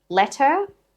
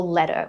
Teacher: Let her with a regular t or true t, or let her with a T flap.